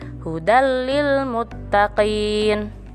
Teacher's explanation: Sedangkan idgham bila gunnah masuk tanpa dengung, jadi tanpa ada penekanan